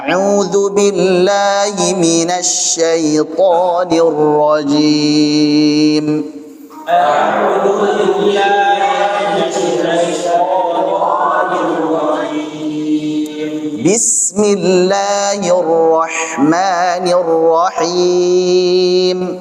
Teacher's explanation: punya sifat tawasud mengalir sedikit suaranya dan punya sifat taqrir getaran hanya getarannya itu halus atau lembut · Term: ro